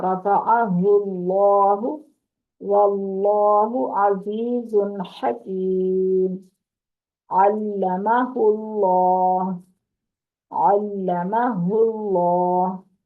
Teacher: अल्लाह का लाम मोटा पड़ा गया जबर और पेश की सूरत में, जब उससे पीछे जबर और पेश है।